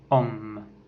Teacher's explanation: est une voyelle postérieure mi-ouverte, arrondie et orale.